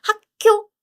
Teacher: this pronunciation changed to double 기역. It sounds like KK. It's impossible to write it in English, but it's a strong K.